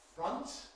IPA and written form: frʌnt (front)